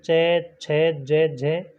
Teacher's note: उच्चारण में स्पर्श का समय अधिक एवं उच्चारण के बाद वाला भाग संघर्षी हो जाता है, वे स्पर्श संघर्षी व्यंजन कहलाते हैं।